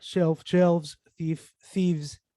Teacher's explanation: the lavio then the voiceless travio dental fricative consonant and then you change it by voicing it creating then the voiced like labiodental fricative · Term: voicing of a consonant